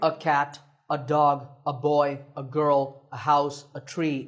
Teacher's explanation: notice that in natural speech we don't say a we say ah